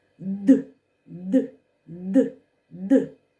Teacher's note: при вимові твердого звука д повітря затримується глибоко в роті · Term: твердим приголосним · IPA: [ д ]